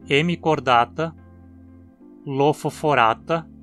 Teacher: temos a terminação ata, que sempre tem o primeiro A longo e, como ele cai na penúltima sílaba, a palavra é sempre paroxítona, como também em hemicordata, lofoforata e equinodermata?